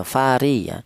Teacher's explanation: fari menggunakan ujung lidah ya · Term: tarkik